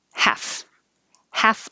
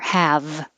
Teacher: teeth on bottom lip with airflow the only difference is voicing so half is voiceless no vibration and have is voiced · So half is voiceless, no vibration, and have is voiced. And because we talked about the final sound, if it's voiceless, like f, the vowel will be a little shorter, half, half off.